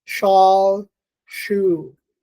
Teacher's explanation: It's unaspirated and it is palatal. So the sh is voiceless, unaspirated, palatal, fricative.